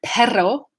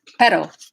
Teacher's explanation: perro trill versus pero that's just one r so that pedal that r in spanish is a flap teen